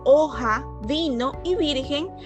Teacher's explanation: solamente llevan la mayor fuerza de voz en la penúltima sílaba